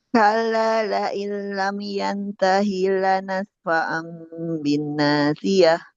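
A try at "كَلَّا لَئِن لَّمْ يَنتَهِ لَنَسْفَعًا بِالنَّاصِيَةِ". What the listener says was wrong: Ihfanya Ibu belum ditunaikan tuh.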